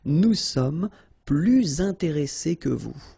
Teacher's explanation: you make this little link, little liaison between the two, so you hear a little bit this S